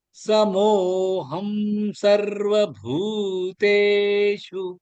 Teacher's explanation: பூதே ரெண்டுமே நெடுலு சு ஷார்ட் ஆயிடும்